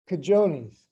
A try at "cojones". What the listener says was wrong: No, cojones. Nah, you keep pronouncing the j, bro. Don't do that.